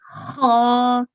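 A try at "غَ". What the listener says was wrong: This is a gha. So it's a ghain, and with the vertical fatha, we will read it gha.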